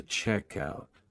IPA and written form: ˈtʃɛkˌaʊt (checkout)